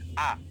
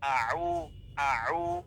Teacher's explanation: আউযু, প্রথমটা হামজা, পরেরটা হলো আইন, মানে হামজাতে কিন্তু কোনো শব্দ হবে না নরমালি আ, আর আইন হবে কঠিন আউ, আউ